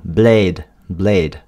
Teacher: la façon dont il prononce blade avec le son A, comme dans Kate normalement, il le prononce presque comme une monophthongue, c'est-à-dire un seul son.